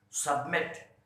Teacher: Now you can see that submit, the last syllable is stressed.